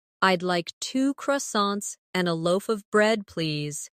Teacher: In connected speech, loaf of sounds like loofa.